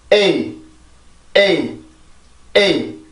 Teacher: 에를 정확하게 해준 다음에 이의 형식으로 소리가 가게 되는 거죠